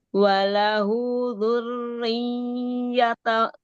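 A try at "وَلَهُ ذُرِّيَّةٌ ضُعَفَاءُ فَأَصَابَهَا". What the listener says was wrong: Jangan lama-lama. Kepanjangan panjang banget. Coba dinaber aja, bukan idgham digunnah. Ronya tahan.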